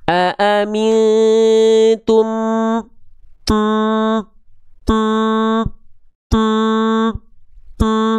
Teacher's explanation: Ya, dibaca dengan mentasdidkan dua huruf tersebut disertai dengung selama dua ha dua harakat. Jadi diidgamkan lalu masuk hidung dengung.